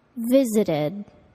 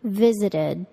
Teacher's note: The ed verb ending sounds like id, visited.